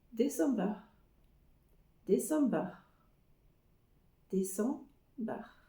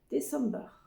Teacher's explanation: Vous voyez, le A n'est pas très prononcé du tout, et le R est aussi, c'est plutôt un petit roulement au fond de la gorge